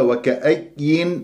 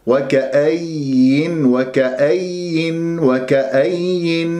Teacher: وما أخلي الياء الأولى تختلس يعني تروح الصوت، يروح صوت الياء الأولى